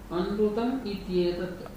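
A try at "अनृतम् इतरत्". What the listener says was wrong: Not ityetatu, itarat. It should be itarat. Anrutam itarat.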